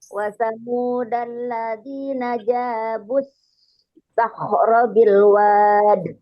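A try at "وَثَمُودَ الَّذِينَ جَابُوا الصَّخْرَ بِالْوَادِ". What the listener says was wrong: Bukan sah. Sod ya sod. Suaranya sokhro, bukan sakhro.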